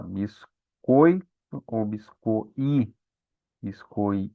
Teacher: o som mais forte ali é do O, né? Biscoito. Então, o O vai ser a vogal e o I vai ser a semivogal